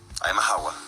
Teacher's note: se aspira o se suprime el fonema consonántico S